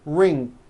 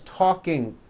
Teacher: The problem is there's just this little c-k sound at the end of the ing sound. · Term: k release sound